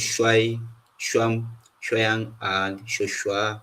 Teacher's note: And then we have the labialized sh sound.